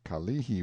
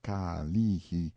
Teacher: the Kalihi Valley, pronounced Ka-lee-hi, stress on the second syllable